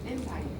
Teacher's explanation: Empire, first syllable stress.